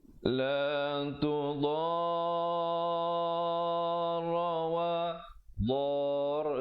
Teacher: Mad lazim kalimi musakhkhal dibacakan 6 harakat.